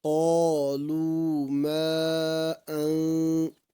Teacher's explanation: یہاں پر مد منفصل ہوگی کیونکہ حرف مدہ کے بعد حمزہ دوسرے کلمے میں ہے